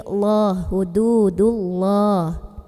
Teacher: Lam jalalah dibaca tafkhim karena kebetulan huruf sebelumnya berbaris dhammah yang dal ya.